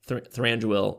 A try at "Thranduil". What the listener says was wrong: Thranduil. You gotta roll your R's.